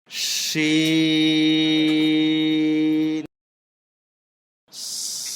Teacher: সিন শিন 4 আলিফ লম্বা হবে, শুরুতে শীষ দেওয়া আওয়াজ হবে